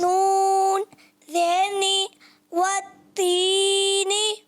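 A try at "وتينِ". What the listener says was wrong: اچھا ماشاءاللہ زبردست پڑھا، پر آپ نے زیادہ نہیں کہنا عرف مدہ کو، وتینی بہت زیادہ لمبا ہو جائے گا، وتینی۔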